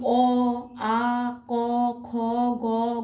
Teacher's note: এই কটির উচ্চারণ স্থান হচ্ছে কণ্ঠ অর্থাৎ এই বর্ণগুলি কণ্ঠ থেকে উচ্চারিত হয়